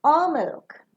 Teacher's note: The last alternative that you are providing will fall down.